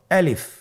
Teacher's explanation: আমি যখন আলিফ বলছি এর মধ্যে কোন টান হবে না